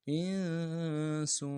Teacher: حمزہ کو نون ساکن کے ساتھ ملانا ہے، نون ساکن میں غنہ کریں گے. اور سین کی سیٹی باریک ہوگی، سین کے اوپر تنوین ہے، یہاں پہ غنہ کریں گے.